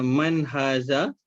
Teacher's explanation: Nun mati bertemu dengan ha izahar halki. Okey. Tiada dengung, jelas. Haza. Ha alif tu mad asli.